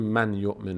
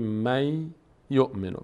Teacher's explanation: یک یای ساکن میگذاریم می یومن یومن سر جای خودش هست فقط نون تبدیل میشه به یا حرف بعدیش · به جای نون یک یای ساکن میگذاریم می یومن یومن سر جای خودش هست فقط نون تبدیل میشه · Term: ادغام, قاعده ادغام